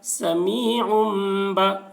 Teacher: تنوین کے بعد با آ رہا ہے اس لیے تنوین کو میم سے بدل کر غنہ اور اخفا کے ساتھ پڑھیں گے، اس کو اقلاب کہتے ہیں.